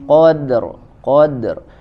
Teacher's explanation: huruf dalnya dipantulkan dulu · jelas huruf dalnya pantulkan dan tipis